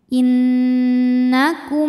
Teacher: mim pertama yang sukun dileburkan ke mim kedua sambil nahan bunyi m-nya dengung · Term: hukum Mimi, idgham mimi